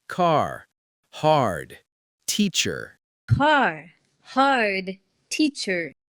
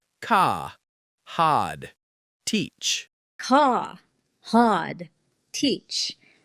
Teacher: in America, we are rhotic. That's a fancy way of saying we pronounce the R sound, especially at the end of words. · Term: Rhotic R